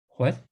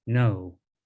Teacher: some sounds in tibetan rise up like that what and others go down like no